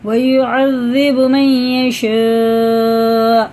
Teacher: مد کے بعد حمزہ آ رہا ہے، 4 الف کے برابر کھینچ کے پڑھنا ہے